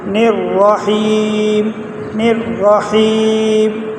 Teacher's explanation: نون کو ڈائریکٹ را کے ساتھ ملائیں گے